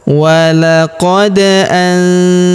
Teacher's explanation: huruf nun sukun bertemu huruf za maka nun sukunnya melabur ke huruf za. Kita baca dengung dan samar. Dengungnya kita tahan dua sampai harakat.